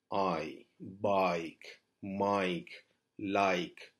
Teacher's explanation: ஒரு நாளும் ஐன்னு சொல்லக்கூடாது, ஆய்ன்னு சொல்லி நாங்கள் கொஞ்சம் அதை நீட்டி சொல்லணும்